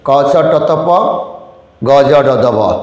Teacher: প্রতি বর্গের প্রথম এবং তৃতীয় ধ্বনিটা অল্প প্রাণ।